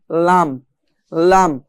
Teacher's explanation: জিহ্বার আগার কোণা এক পাশের কোণা সামনের উপরের এক পাশের দাঁতের গোড়ার সঙ্গে লাগিয়ে পড়তে হয়